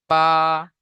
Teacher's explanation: দুই ঠোঁটের ভিজে অংশ থেকে উচ্চারিত হয় বা